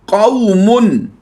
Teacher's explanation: हमने लंबा नहीं किया क्योंकि यहाँ पर वाव लीन है